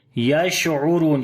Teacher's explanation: عین کو گلے کے درمیان والے حصے سے پڑھیں گے، را کو موٹا پڑھیں گے، لمبا بھی کریں گے · شین کے اوپر صفت تفشی یعنی شین کی آواز کو منہ کے اندر پھیلائیں گے، اور صفت ہمس بھی ہوگا، سانس بھی جاری ہوگا ، عین کو گلے کے درمیان والے حصے سے پڑھیں گے،